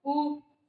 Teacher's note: जब हम ऊ बोलते हैं, ऊ आप बोल के देखिएगा, ऊ हम हमारा मुंह गोल हो रहा है ना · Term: वृत्ताकार